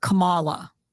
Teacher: I remember her putting the emphasis on the second syllable